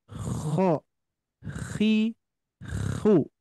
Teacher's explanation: Kalau kho lak-laknya itu bergetar.